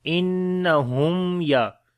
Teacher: After the mim sakin, the next is ya, we make izhar shafawi, the clear sound of mim.